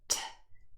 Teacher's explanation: T is a plosive and it is an unvoiced plosive. That means we do not use our vocal cords. T, they do not vibrate.